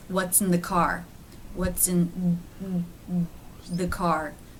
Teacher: the tongue isn't coming all the way through the teeth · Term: th sound